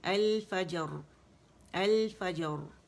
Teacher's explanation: فا جیم باریک اور را موٹی